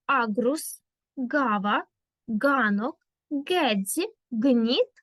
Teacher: звук Ґ проривний під час вимови якого язик змикається з піднебіння